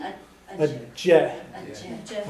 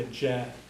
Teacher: you can barely hear the uh CH at the end if you want to put it in but you can almost just drop it out